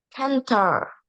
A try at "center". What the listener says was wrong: Center. Can I say se, not ke? It's se. Center.